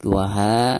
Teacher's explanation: waha di sini mad tabi'i dibacanya 2 harokat